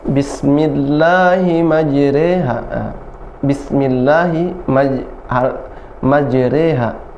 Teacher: Kemudian yang kedua ada imalah ya, pada firman Allah bismillahi majriha, bismillahi majriha, bukan majraha, tapi harokatnya lebih ke kasrah. Majriha, re diimalah, dimiringkan harokatnya, majriha ya, tidak majraha tapi majriha ya.